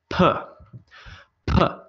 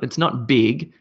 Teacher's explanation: It's just purely lips and you're shooting air out. You should be able to feel on your hand, p, p, p.